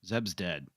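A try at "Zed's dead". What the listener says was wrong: interesting that you decided that that was a B and not a D.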